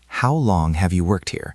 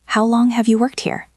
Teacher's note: The stress is on long and worked.